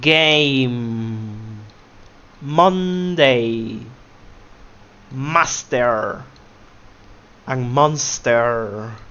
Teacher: we have the M, which is produced by the nose.